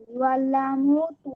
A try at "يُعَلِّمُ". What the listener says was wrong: ইউআল্লামু কেন? ইউআল্লিমু তাসদীদের নিচে জের হলে তো সেটা জের হয়, শুধু হরফের উপরে থাকুক সেটা।